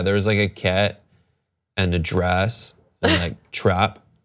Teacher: The easiest ones are the words kit, dress, and trap, which should be turned into cat, drass, and trop.